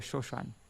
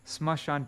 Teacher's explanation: in Bengali, if there's two characters like that next to each other, like two consonants next to each other like that, then lots of times it's not pronounced the ma